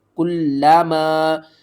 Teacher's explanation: تشدید کی وجہ سے لام کے اوپر سختی کریں گے اور لام کو 2 بار پڑھیں گے